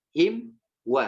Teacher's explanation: sempurnakan mimnya baru ke huruf setelahnya, itu huruf waw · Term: mim sukun